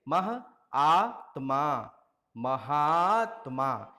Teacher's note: महा धन आत्मा। महा का अंतिम स्वर आ है, आत्मा का पहला स्वर आ है। दोनों आ मिलकर के एक दीर्घ स्वर आ में बदल जाएंगे।